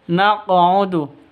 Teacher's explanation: Qalqalah karena ada karena ada di tengah berarti qalqalah sugro lebih rendah pantulannya